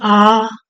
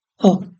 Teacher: इसमें एक गुना समय लगता है आ बोलो आ बोलते हैं आ तो इसमें दो गुना समय लगता है अ की अपेक्षा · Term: दीर्घ स्वर